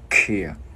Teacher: Chữ K bật cổ ra